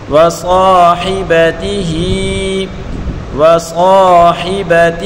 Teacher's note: ہا کے نیچے کھڑی زیر ہے، اس کو ایک الف کی مقدار کھینچ کر پڑھیں گے